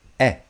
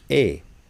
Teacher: The word that means is is an open choppy sound. E. The word that means and is slightly longer and closed.